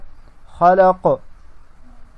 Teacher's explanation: خا زبر خا، لام زبر لا، خلا، قاف زبر قا، خلق، وقفاً، خلق، خلق۔ قاف پر وقف کے حالت میں قلقلہ ہوگا